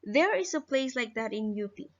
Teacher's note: The first pitch accent on a place is noticeably higher than the first accent on ye in the prior intonation phrase. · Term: high onset